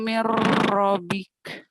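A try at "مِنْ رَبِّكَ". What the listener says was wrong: Kurang tasjidnya. Mir Rabbik. Mir Rabbika. Mir Rabbika aja. Mir Rabbika. Kurang tasjidnya tuh. Nyambernya kurang ya.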